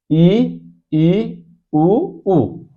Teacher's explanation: जिन स्वरों के उच्चारण में मुह लगभग बंद रहता है उनको संवृत स्वर कहते हैं